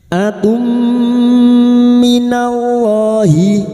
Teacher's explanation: memasukkan dengan mendengung masuk pada huruf mim dan mendengung selama tiga harakat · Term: idgam bigunah